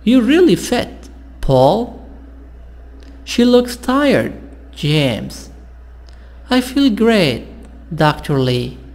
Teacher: usually falling intonation and a pose before the name so here before the name before the comma sound is down and you stop for short time